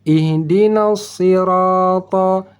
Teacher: Ta dibaca tebal, yaitu terangkat pangkal lidah seperti kita belajar pada gambar makhraj ta tadi. Ta, cara baca ta tebal menaikkan pangkal lidah.